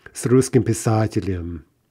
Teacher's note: we're trying to add yom, but here we get yem instead because the ending is not stressed.